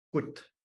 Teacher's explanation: There's the w sound spreads into the vowel in most Northern Tlingit, so you get gut.